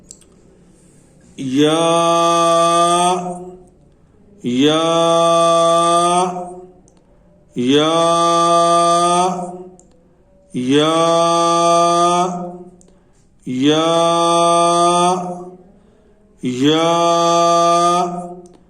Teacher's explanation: غیر مدہ جو ہے یہ جہاں سے جیم اور شین ادا ہوتے ہیں، یعنی زبان کا جو پیٹ ہے یہ جب اوپر اٹھ کے تالو کو لگتا ہے تو پھر یہ یا ادا ہوتا ہے. اور اگر یا مدہ ہو تو وہ منہ کے خالی حصہ سے نکلتی ہے